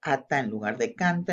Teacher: en esa primera sílaba se ha omitido ataque y coda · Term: omitir el ataque y la coda